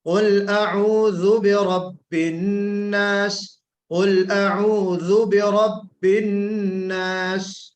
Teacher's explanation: اعوذ تھوڑا سا ہو گیا، آپ نے بالکل زائی تو نہیں نکالا، لیکن ہمیں ذال کو بہت ہی باریک انداز سے نکالنا ہے